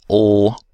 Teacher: For the fairly special lateral sound ul, we have airflow around the sides of the tongue, so the transverse muscles are used to pull the tongue sides in toward the midline.